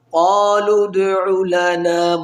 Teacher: واو کو نہیں پڑھیں گے اور جو بیچ میں دو الف ہیں ان کو بھی نہیں پڑھیں گے. قالوا ادع لنا بلکہ اس لام کو دال کے ساتھ ملائیں گے.